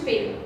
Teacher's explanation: os lábios que vocês encostaram fizeram uma pequena explosão